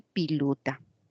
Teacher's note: la vocal e la confunde con la i la vocal o confunde con la u con la alta cerrada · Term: castellano andino